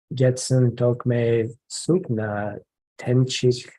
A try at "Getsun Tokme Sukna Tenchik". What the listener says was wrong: The meters. And there's not enough beats, so the carving is off.